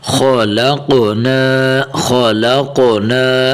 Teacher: قوف کو بھی موٹا کرنا ہے اور یہاں خا کو بھی موٹا کر کے پڑھنا ہے